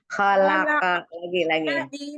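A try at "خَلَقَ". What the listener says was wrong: Ini aja pangkal lidahnya tuh langsung dilepas gitu. Khalaqa gitu. Karena mau o, padahal kan enggak o. Dia lepas aja keyboardnya tetap kayak o, tapi maksudnya enggak o. Khalaqa, jangan khalaqa tapi khalaqa.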